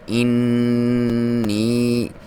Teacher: نون پہ شد ہو یا میم پہ شد ہو تو یہاں پہ غنہ کیا جاتا ہے، اور اس کی لمبائی بھی ایک الف کے برابر